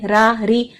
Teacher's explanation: باریک را کرنے کے لیے ہمیں کیا کرنا ہے، صرف زبان کی جڑ کو نیچے رکھنا ہے، صرف یعنی مخرج کو استعمال کرنا ہے رو کا، تو آواز باریک ہو جائے گی.